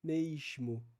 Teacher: a s que é pronunciado como sh logo depois da vogal influencia nessa ditongação